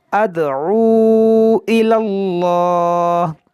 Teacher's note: جلال سے پہلے زبر ہے تو اس کو موٹا پڑھیں گے